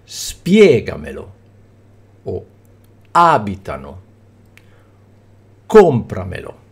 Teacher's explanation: l'accento cade sulla quartultima sillaba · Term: bisdrucciole